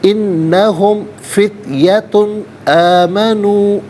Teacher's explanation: تنوین کو اظہار کے ساتھ پڑھیں گے، غنہ یا اخفا نہیں کیا جائے گا. انہم فتیتن آمنو، بی علیحدہ، ربی علیحدہ، ہم علیحدہ، ملا کر پڑھیں گے.